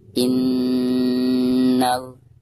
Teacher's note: cara membacanya harus ditekankan disertai dengan gunnah. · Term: huruf gunnah